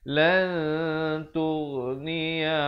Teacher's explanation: Ikhfa hakiki. Jadi kita sembunyikan ataupun samarkan bunyi nunnya di belakang huruf ta dengan kadar 2 harakat.